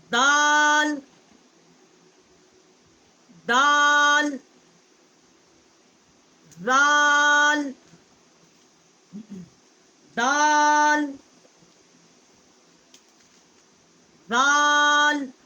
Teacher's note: زبان کی نوک جو ہے جب ثنایا علیا کی جڑ سے ٹکر کھاتی ہے تو وہاں سے اس کا مخرج نکلتا ہے